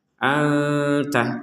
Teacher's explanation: nun sukun bertemu Ta disamarkan